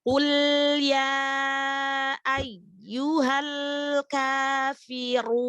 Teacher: Jadi ketika lam sukun tidak terlalu cepat untuk dilepaskan.